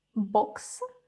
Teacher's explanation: і маємо короткий оу бокс